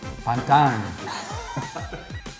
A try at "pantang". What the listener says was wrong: Ang at the end, like ang mo.